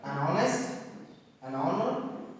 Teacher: o is considered as vowel and h becomes silent here so that's why here exceptionally we are using an article an